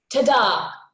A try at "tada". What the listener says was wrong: it feels a little bit like a question